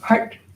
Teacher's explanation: It's a retroflexive T. It curls back.